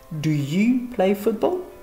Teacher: intonation montante bien sûr parce que c'est une yes no question